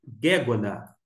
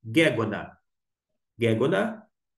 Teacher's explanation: A acentuação está no Ge, na primeira sílaba.